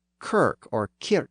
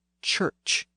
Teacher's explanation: the hard k sound found in many Germanic words was softened into a CH sound in many Old English words · the northern dialect tended to retain those harder K and SK sounds